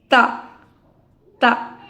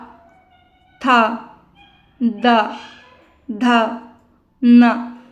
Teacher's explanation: जीभ हमारे दांतों के बीच में आ के टच होता है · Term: ता वर्ग